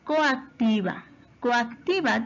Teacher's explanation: En la palabra coactiva, coactiva tiene 2 vocales abiertas o cerradas. Son 2 vocales abiertas, ¿cierto? Porque es O y A. Entonces, como son abiertas, se van a separar